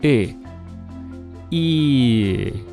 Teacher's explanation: if I take the sound and move my tongue back I'll get the Russian sound